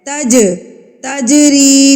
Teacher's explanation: جیم کے اوپر جب یہ علامت آ جائے تو یہ جیم ساکن کہلائے گا، یعنی کہ یہ حروف قلقلہ جیم ہے. اس کو ہم نے ہلا کے پڑھنا ہے، قلقلہ کر کے پڑھنا ہے، تھرتھراہٹ سے پڑھنا ہے، تا کو جیم کے اوپر مار کے پڑھنا ہے.